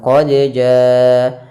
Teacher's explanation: qalqalah, artinya memantul atau dia ittirab, pantulan, getaran